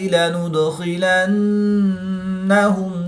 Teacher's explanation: نون مشدد میں غنہ آنی کر کے پڑھیں گے